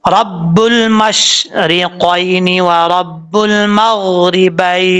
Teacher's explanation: जब शीन साकिन हो तो उसको पढ़ते हुए आवाज़ वहाँ पर जम जाए, फैलती ज़रूर है लेकिन कलकला नहीं होता।